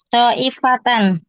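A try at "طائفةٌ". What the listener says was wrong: Ta'ifatun mufrad, jangan digandakan.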